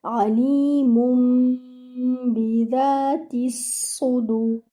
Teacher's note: the noon which was there in this tanween, the noon sakina, is now changed to meme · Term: iqlab